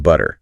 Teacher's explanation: Almost a D sound instead of a hard T. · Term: flap t